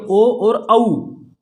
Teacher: ओ और औ का उच्चारण स्थान कंठ ओष्ठ होगा